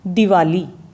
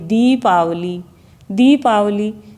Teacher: छोटी ई में समय कम लगता है और बड़ी ई को बोलने में थोड़ा सा समय अधिक लगता है।